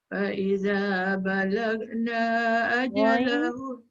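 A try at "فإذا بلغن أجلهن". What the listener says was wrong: Ghain tebal, na tu pendek.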